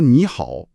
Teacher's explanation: 2个3声碰一块儿了，第一个你在口语里就得变成2声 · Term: 连读变调